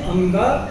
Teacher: कवर्ग का जो अंतिम अक्षर है अंग, बच्चों आप लोग उसे बहुत बार गलत बोलते हो, उसको अड़ा बोलते हो, वो गलत उच्चारण है। हमने अंगा बोलना है।